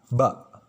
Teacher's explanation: Pelafalan huruf ba itu terletak di antara bibir atas dan bibir bawah, ya. Baina syafatain, di antara dua bibir, yaitu bibir atas sama bibir bawah.